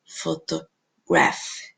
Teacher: eu tenho dois schwas. Eu tenho na primeira sílaba e na terceira sílaba.